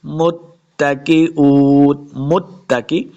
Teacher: تا مشدد ہے، میم کو تا کے ساتھ ملا کے پڑھیں گے۔ متکئون، یہ حمزہ آپ کو نظر ہے، اس کو واؤ کے ساتھ ملانا ہے۔